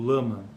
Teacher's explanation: apresenta em português as realizações l alveolar quando antecede uma vogal